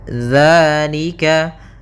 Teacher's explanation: Di sini ada hukum tajwid berupa mad tabi'i, yaitu adanya fathah bertemu dengan alif. Maka kita panjangkan 2 harakat